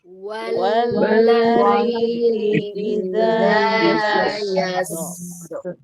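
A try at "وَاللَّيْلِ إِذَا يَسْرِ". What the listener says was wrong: Tapi Bu ya, rokhawah tapi jangan ditasdidkan. Kalau Ibu ditasdidkan gini, idza yasser. Tuh, itu mah yasser, itu mah ditekan. Tidak ditekan, ngalir saja. Idza yasser. Jangan ditekan, ngalir.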